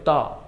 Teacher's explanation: অল্প প্রাণ, বাতাস হয় না